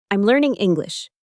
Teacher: Here's something really interesting about English rhythm. At the end of a statement, the intonation falls. Your voice goes down.